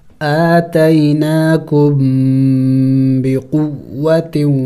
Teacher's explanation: میم ساکن کے بعد با ہے تو یہاں بھی اخفا ہوگی یعنی ناک میں آواز چھپانا ہوگا